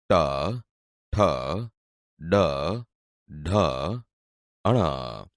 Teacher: બોલતી વખતે જીભ ઉપર દાંતના મૂળ ભાગને અડે છે, એટલે તે મૂર્ધન્ય વ્યંજન છે.